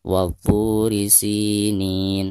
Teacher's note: Wabu mad tabi'i karena ada harkat dhammah po lalu berhadapan dengan waw sukun. Dibacanya 2 harokat.